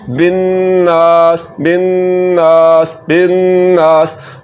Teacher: तो यहाँ पर हमने क्या किया, पहले तो नून पर गुन्ना किया और उसके बाद हमने अलिफ मद्दा की वजह से इसको लंबा किया